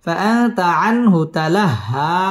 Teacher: ফাআতা আন ইজহার এখানে গুন্নাহ ছাড়া স্পষ্ট করে পড়তে হবে